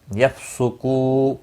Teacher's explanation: یفسقو کو واو مدہ ہے، ایک الف کے برابر کھینچ کر پڑھیں گے، اور وقف کی صورت میں نون ساکن پڑھا جائے گا۔